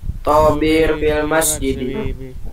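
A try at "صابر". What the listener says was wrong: Nah, bukan Tobir, so ya, sod. Sobir fil masjid.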